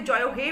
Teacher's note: জয় হে বলে যে টানটা দিই এটাই কিন্তু একটা প্লুতস্বরের দৃষ্টান্ত